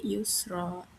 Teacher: cara bacanya tanwin dihilangkan dan diganti dengan fathah serta dipanjangkan 2 harokat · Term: mad iwad